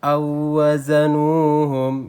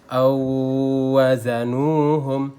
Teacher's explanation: Di sini dia waw mati dan waw hidup atau waw yang berharokat, maka berlaku idgham mutamasilainnya. Dia dibaca langsung lebur ke huruf keduanya.